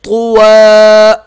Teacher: وقف میں اس کے ساتھ الف پڑھیں گے یعنی کہ ایک الف کی مقدار اسے کھینچیں گے